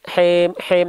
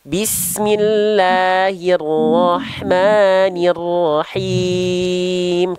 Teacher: Jelaskan vokal-vokal I-nya, Bang. Jangan sampai hem, tapi him. Rendahkan rahang bawah dan angkat tengah lidah.